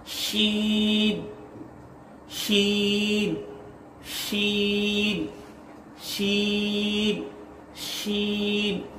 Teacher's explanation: یہ زبان کا بیچ کا حصہ اور تالو کا اوپر کا بیچ کے حصے سے ادا ہوتا ہے، جیسے کہ شین زبان کا بیچ کا حصہ اور تالو کے اوپر کے بیچ کے حصے سے شین ادا ہوتا ہے.